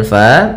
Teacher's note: Kemudian pada lafal fa, di sini ada mad tabi'i, yaitu fathah bertemu alif, panjangnya 2 harokat.